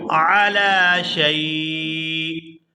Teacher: یہاں پر اگر ہم وقف کرتے ہیں تو وقف کی وجہ سے حمزہ جو ہے یہ ساکن ہو جائے گا